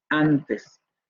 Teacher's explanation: El fonema anterior abierto no labializado, nasal, aparece después de pausa y antes de una nasal. Aquí tenemos pausa y tenemos después de la vocal A una nasal. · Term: nasalizada